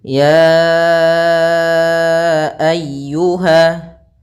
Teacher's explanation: Karena mad jaiz munfasil yaitu apabila adanya huruf hamzah yang datang setelah huruf mad dan hamzah tersebut di lain kata, maka kita panjangkan sepanjang 4 harokat atau 5 harokat